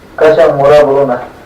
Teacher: So this is the first contour where you have a high accent on both the stressed syllables of both words